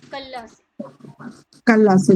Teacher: کلا سے. جی جی ہاں، کلا پہ لام مشدد ہو گیا ہے تو اس کو 2 بار پڑھیں گے